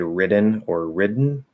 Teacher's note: So anyway, so it could be a weak D. Most likely by default, it's probably going to be a flapped D or a nasal plosive. Either one, it doesn't matter.